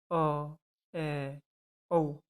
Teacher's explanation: number दो अर्ध विवृत जिन स्वरों के उच्चारण में मुख द्वार आधा खुलता है